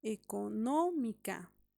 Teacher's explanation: siempre la elevación de voz de la sílaba tónica va a estar en la antepenúltima sílaba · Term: palabras esdrújulas